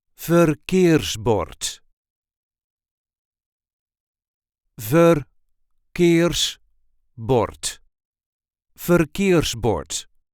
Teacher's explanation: There is a light emphasis on the second syllable.